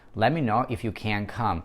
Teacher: Выделяем can. Т не произносится. Хотите произносите, делайте стоп. Хотите вообще его дропайте.